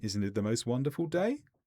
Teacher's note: But if you go up, isn't it the most wonderful day? Then it's a question where you're looking for confirmation from the listener.